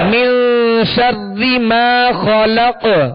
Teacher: ما خلق، خا کو پر پڑھیں گے حروف مستعلیہ میں سے، اور قاف پر ہم نے وقف کیا، یہاں ساکن ہے اور وقت کی صورت میں ہم نے اس کو ساکن کیا، تو یہاں پہ قلقلہ ہوگا